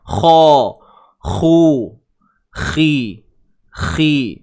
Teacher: Huruf kha baris bawah khi tebal lah, tapi dia tidak setebal macam baris atas, macam baris bawah, macam baris depan.